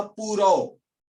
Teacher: शब्द, भाई मैंने कहा पूरो, तो मैं पूरो बिना लिप्स को चिपकाए नहीं बोल सकता, है ना। मैं पूरा बोल ही नहीं सकता जब तक कि मैं दोनों लिप्स को चिपका ना दूं, अटैच ना करा दूं।